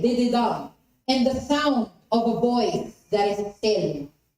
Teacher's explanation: You have unstressed, unstressed, and stressed.